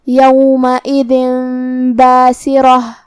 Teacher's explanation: ہم یہ تنوین کو میم میں بدل کے غنہ کے ساتھ یہ حکم کو ادا کریں گے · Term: اقلاب